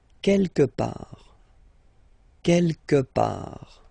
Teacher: Don't pronounce the final T.